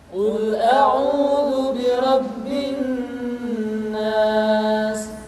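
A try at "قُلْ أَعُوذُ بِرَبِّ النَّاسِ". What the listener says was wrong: Tidak boleh dibaca Qul a'udzu birabbin nas, tetapi ditahan suaranya ketika mengucapkan nun tasydid seperti ini. Qul a'udzu birabbin nas.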